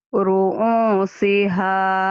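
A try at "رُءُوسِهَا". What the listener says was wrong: Ru'u, biasa aja Hamzah. Ru'usiha. Ru'usiha.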